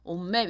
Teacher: 일단 옷 음절 끝소리 끊어준 다음에 다시 맵시의 미음 때문에 옷맵 이런 식으로 비음화가 된다